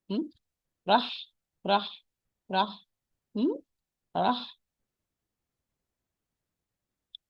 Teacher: It's حرف رخ, loose. It's حرف مهموس. It's voiceless. A lot of air running, sound running, and light letter. And the ha come from the is produced from the same articulation point of the ayn.